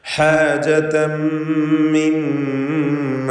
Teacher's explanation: സുദൂരിഹിം ഹാജ ഹാജതം മിമ്മ തൻവീനും ശേഷം മീമും അതിൽ പൂർണ്ണമായും തൻവീനിനെ മീമിൽ ലയിപ്പിച്ച് മണിക്കുക